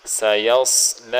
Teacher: صاد کو موٹا کر کے پڑھیں گے